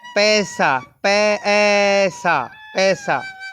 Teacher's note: आई नहीं है, इसका उच्चारण ए है।